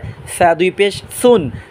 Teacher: সা হবে জিব্বার আগা, সামনে দাঁতের আগা, নরম আওয়াজে